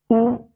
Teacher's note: پیش کو جب ادا کریں گے تو دونوں ہونٹوں کو کامل گول کریں گے